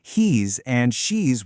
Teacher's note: Now, for he is and she is, the most important thing to remember is the sound at the very end. The word is has a Z sound, right? So the contractions do too. It's he's and she's with that little buzz.